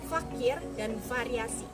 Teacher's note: Selanjutnya konsonan frikatif labiodental, yakni F dan V, yaitu posisi gigi atas bertemu dengan bibir bawah